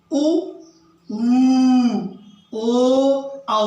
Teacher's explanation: अगला है पश्च स्वर, यानी वे स्वर जिनका उच्चारण करते समय जिनका उच्चारण जीवा के पिछले भाग से होता है। वे स्वर जिनका उच्चारण जीवा के पश्च भाग से होता है उसको पश्च स्वर कहते हैं।